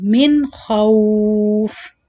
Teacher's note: Don't do any gunna here. Just a clear noon sound.